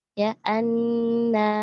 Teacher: Ketika dia sukun, dialirkan nafasnya, dialirkan suaranya, kemudian ditambah lagi sofirnya ya, suara tajamnya. Suara desis seperti suara ular.